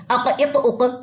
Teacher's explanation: آواز bounce back ہو رہی ہے، پلٹ کے واپس آ رہی ہے